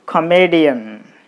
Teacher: So you put the stress mark on me, then it will be comedian.